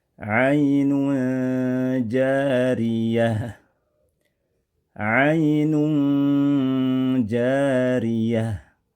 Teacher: pertengahan antara bunyi idhar dan ilgham kemudian disertai dengung dua harakat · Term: ikhfa